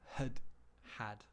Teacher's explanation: saying exactly the same sound twice so it's not had had the first one gets reduced we use uh schwa